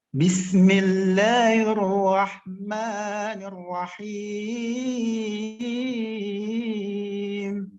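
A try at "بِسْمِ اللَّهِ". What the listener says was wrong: Bismillahi. Yang ini kurang kedengaran dia punya hi-nya.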